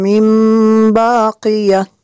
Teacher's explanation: نون ساکن کے بعد با ہے تو یہاں پہ اقلاب ہوگا، نون ساکن کے جو نون ساکن ہے اس کو میم سے بدل کے پڑھیں گے